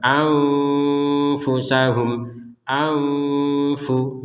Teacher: Anfusahum di sini nun sukun bertemu fa, kita baca dengan samar